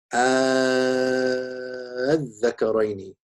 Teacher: You can either say al-dhakaraini, in which case this is ibdal, right? So the second hamza has been changed to an alif, and then because of iltiqa as-sakinain, you have mad lazim. The other wajh, which is accepted in Hafs and Hasim, is the tasheel of the second hamza.